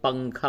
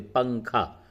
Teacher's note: اخفا کی مثال اردو میں دی جاتی ہے، جیسے ہم لوگ پنکھا بولتے، پنکھا، تو نون پے کے بعد نون آیا، وہ نون ساکن ہے، اس کے بعد کاف، تو وہاں پہ ناک میں آواز جا رہی ہوگی